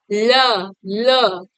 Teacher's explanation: इसमें मुख द्वार मध्य में बंद हो जाते हैं ठीक यानी आपका जो मुख द्वार है व बीच में बंद हो जाता है और जो आपका हवा होता है वो दोनों ओर से निकल जाता है · तो जीभ के बीच में बंद हो जाता है और बगल बगल से वायु निकलती है, हवा निकलता है। ठीक, इसी को हम पार्श्विक कहते हैं। · पार्श्विक में क्या होता है, मुख द्वार बीच में बंद हो जाता है और हवा जो होता है वो दोनों किनारों से निकल जाता है